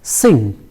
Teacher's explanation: this is a nasal sound which comes only at the end of a word, like a sound in the word sing